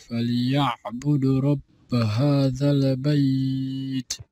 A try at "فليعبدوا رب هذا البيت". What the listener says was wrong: فليعبد رب, you dropped the واو مد here. It must, the dal must be two counts due to the waw after it. فَلْيَعْبُدُوا رَبَّ هَذَا ال.